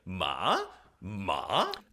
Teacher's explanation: it does a little dip and then rises. It's basically broken in the middle. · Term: fourth tone